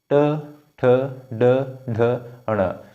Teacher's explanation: च के बाद ट बोलो च ट जीभ थोड़ी सी आगे जा रही है ट ठ ड ढ ण मुर्धा अब जीभ थोड़ी सी आगे